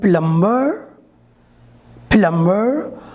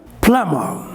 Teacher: this plum means the final ra sound is not pronounced or ba sound is silent completely silent